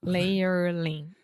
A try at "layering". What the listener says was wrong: Layering. Layering. No, there's no L in the middle. Layering. It's just a layer. Ing.